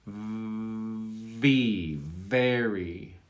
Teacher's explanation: So that V should already be resonating before you articulate it.